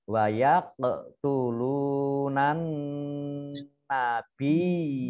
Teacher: ini nun tasdid dibaca gunah, mendengung. Ya, ditekan dua harokat.